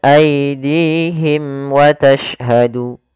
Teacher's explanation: izhar syafawi suara mimnya harus dibaca dengan jelas